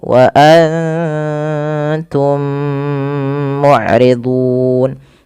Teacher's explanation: Kemudian mim mati bertemu mim, tahan dulu 2 halakat. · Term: idgham mimi